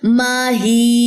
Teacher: یہاں پہ یا کی زبر جب گرے گی تو یہاں پہ یا مدہ ہوگا، 2 سیکنڈ کے لیے ہی لمبا ہوگا، ما ہی، ٹھیک ہے؟